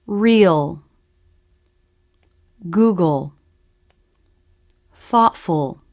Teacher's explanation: speakers make the full dark l both parts all the time what's important is the dark sound make it with the back of the tongue · the dark l has two parts the first and most important part the tongue pulls back or presses down in the back